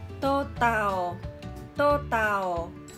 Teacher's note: 無気音といって、発音するときに、空気が漏れないように言うっていう特性があるんです